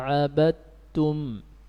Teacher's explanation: Tidak ada lagi aroma dal, semuanya masuk ke ta.